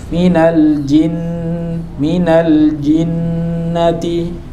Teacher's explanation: Minal jinnati Nah, ini ada ziyadatul ghunnah, ada ziyadatul ghunnah. Di sini ghunnahnya ada ziyadahnya, tidak aslul ghunnah.